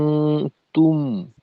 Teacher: মিমের জজমের উচ্চারণটা যেন ধাক্কা না খায়, তুম এভাবে মাখরাজ থেকে পৃথক হওয়ার সময় যেন বাড়তি একটা আওয়াজের তৈরি না হয়, নিঃশব্দে মাখরাজ থেকে পৃথক হতে হবে।